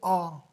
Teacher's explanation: जिस स्वर का उच्चारण करते समय मुख पूरा खुल जाता है उसे विवर्त स्वर कहते हैं